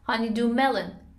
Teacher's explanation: stress is on the first syllable of melon